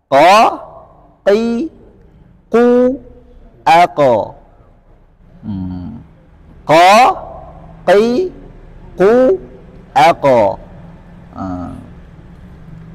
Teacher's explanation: makhraj huruf qaf adalah pangkal lidah dekat dengan tenggorokan, dengan mengangkatnya ke langit-langit atas dekat dengan anak lidah. Berarti di sini kalau kita umpamakan ini lidah, maka dia di sini.